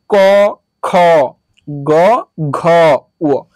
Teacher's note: ট্রাই করে মুখে হাত দিয়ে ক খ গ ঘ তাহলে দেখবা যেটাতে বাতাস বেশি বের হচ্ছে ওইটা হাতে লাগবে ওইটা হচ্ছে মহাপ্রাণ